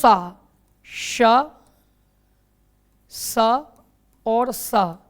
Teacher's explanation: उष्म व्यंजन के तीनों सा श स और सा ये अघोष होते हैं